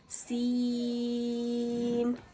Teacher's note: سین پہ مد ہونے کی وجہ سے اسے ہم 3 الف کے برابر کھینچ کے پڑھیں گے، اور سین حرف صفیریہ میں سے بھی آتا ہے تو اس میں سیٹی کی آواز بھی پیدا کریں گے،